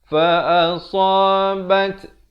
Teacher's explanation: dibunyikan hamas, bunyi angin di situ